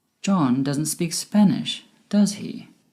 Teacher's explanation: My voice went down at the end with does he? Because I am sure he doesn't speak Spanish, but it would be great if you could confirm this with me.